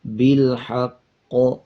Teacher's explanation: جب وقف کریں گے تو اس پہ قلقلہ کیا جائے گا · قاف کے اوپر شد ہے، مضبوطی کے ساتھ قاف کو ادا کریں گے اور پچھلے الفاظ کے ساتھ ملائیں گے ، جب وقف کریں گے تو اس پہ قلقلہ کیا جائے